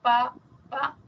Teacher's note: Cuando digo bilabial como pa pa son los dos labios